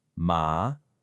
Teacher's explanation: Think of a firm, decisive command like saying stop or go. It's just a sudden drop in pitch. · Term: fourth tone